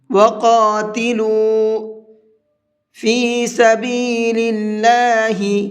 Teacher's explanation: اللہ کے لام کو باریک کر کے پڑھیں گے، منہ بھر کے نہیں پڑھیں گے